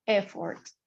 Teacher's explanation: The first syllable is emphasized.